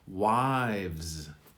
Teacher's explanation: So the V is softer because the Z predominates at the end. Wives. The V quickly moves to the Z.